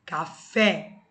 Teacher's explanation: toda oxítona terminada em e ou s também é acentuado café o fé é a mais forte · Café, o fé é a mais forte. Como ela é terminada em E, ela é acentuada.